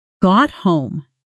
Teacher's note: Notice got home compresses slightly. The T in got softens almost into a quick stop before home.